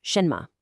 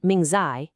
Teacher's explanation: those last syllables, me and zi, they're totally unstressed. They're quick, they're light. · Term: neutral tone